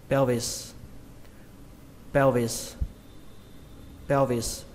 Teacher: Từ này trọng âm của nó rơi vào âm đầu tiên, đó là âm peo các bạn nhé, hoặc là âm peo các bạn. · Khi các bạn phân tích nó ra thì nó là âm pe đến âm o, nhưng mà khi chúng ta đọc nhanh thì nó nghe là peo, peo. Xuống giọng âm thứ hai, âm vis. Các bạn đọc nhanh là pelvis, pelvis, pelvis.